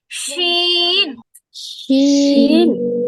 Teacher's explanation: কিন্তু এটা মূলত মানে এই মাখরাজের কাছাকাছি, তো খানিকটা জিহ্বার কাজ আছে, এখানে জিহ্বার মাঝখানে একটু কাজ আছে, এজন্য এটার মধ্যে এটা দিয়ে দিছে। এই শিন আর ইয়াটা পুরোপুরি জিমের মতো অতটা জিহ্বার মাঝখান উপরে তালুর সাথে টাচ করে না